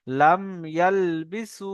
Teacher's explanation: মিম সাকিনকে বিনা গন্যায় জাহির করে পড়তে হবে